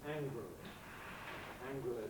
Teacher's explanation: Clearly, predominant by far is with a schwa pronunciation, angrily.